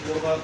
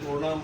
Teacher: শব্দের প্রথমে যদি র ফলা থাকে, তাইলে অকারের উচ্চারণটা ওকারের মতো হয়ে যায়।